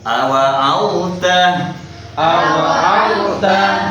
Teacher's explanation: Tidak boleh masuk ke ta ya. Ini sudah bukan idgham lagi, tapi izhar.